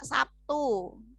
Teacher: bakunya kata bakunya itu kan menggunakan bunyi bea Sabtu seperti itu tapi kalau misalnya di bahasa Indonesia sering kali kita mengucapkan dengan P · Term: asimilasi